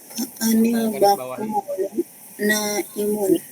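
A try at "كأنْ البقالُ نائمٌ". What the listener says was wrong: Ka'anil ya, ka'anil bakolu naimun. Maaf itu damahnya kurang ya.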